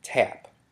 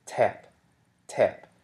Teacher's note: the t is realized as an aspirated voiceless alveolar stop when it's in syllable initial position, such as in the word tap.